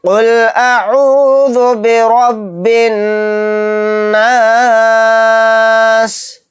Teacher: نون کے اوپر تشدید ہے تو یہاں پر غنہ بھی کریں گے